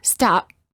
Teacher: when they say the letter P in the word stop the lips stay closed no air comes out this creates almost a silent version of the sound P or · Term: half P